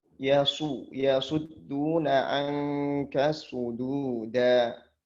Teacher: Sodnya tebal tapi jangan sampai dalnya ikut tebal.